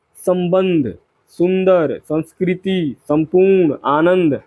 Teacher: अनुस्वार स्वर के बाद आने वाला व्यंजन है। इसकी ध्वनि नाक से निकलती है।